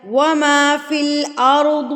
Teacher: ضاد پر کر کے پڑھا جائے گا